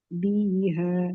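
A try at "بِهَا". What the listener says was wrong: tidak. Biha. Biha. Bi-nya tipis. Apa? Satu harokat. Biha.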